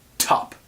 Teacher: with a puff of air in top